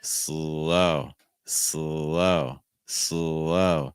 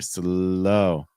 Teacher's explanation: using a dark L with the tip of my tongue down against the bottom of my mouth